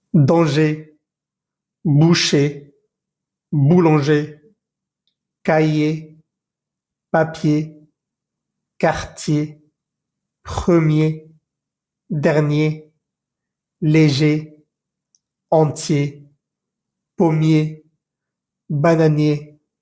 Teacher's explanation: En esta lista de palabras no pronunciamos nunca la R al final.